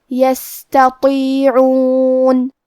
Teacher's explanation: تو حروف التفخیم میں سے ہے، تو ہم تو کو موٹی آواز میں پڑھیں گے